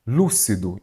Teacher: então você vai observar que a sílaba tônica é qual? O lu, não é isso?